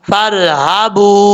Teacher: فا کو جب را سے ملائیں گے تو الف کو چھوڑ دیں گے، الف کو پڑھنے کی ضرورت نہیں ہے. فر ہا زبر ہا، فرحبون.